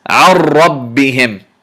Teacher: Notice my tongue vibrated slightly more than usual when I'm pronouncing this ra